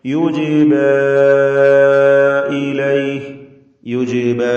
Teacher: ജീമിന്റെ സുക്കൂൻ ഖൽഖല സൂറ നൽകി ശബ്ദം ചലിപ്പിച്ച് ഹറക്കത്ത് പോലെ വ്യക്തമാക്കുക. യുജിബ ഇലൈഹി യുജിബ ഇതിലെ അലിഫിന്റെ ദീർഘം മദ് മുൻഫസിൽ ജായിസ് എന്നതാണ്.